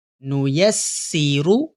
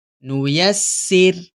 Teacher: وقف کرنے سے پہلے را کو موٹا پڑھا ہے اور وقف کرنے کے بعد را کو باریک پڑھا ہے